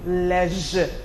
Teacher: The final sound there being the schwa